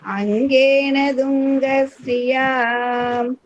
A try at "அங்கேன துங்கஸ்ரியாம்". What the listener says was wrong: கிடையாதுப்பா அம்மா, துங்கன்னு சொல்லக்கூடாது. அங்கேன துங்க ஸ்ரீயா தூ தாவ அழுத்தி சொல்லுங்க.